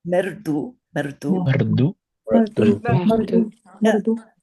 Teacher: Not too much rolling at the end. R, like a French R. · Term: R as a vowel